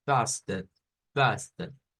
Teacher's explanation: No lo leemos como fasted, sino que ahí es donde les digo, no es una U, porque la U es un poquito más prolongada. Este sonido es como un sonido que decae. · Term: schwa